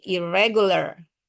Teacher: in berubah menjadi ir ketika bertemu dengan bunyi-bunyian r